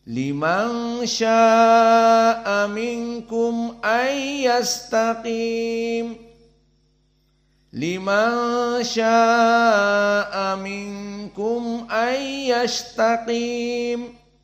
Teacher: Maka min ikhfa, nun sakinah bertemu dengan kaf, dan kum an idhar syafawi.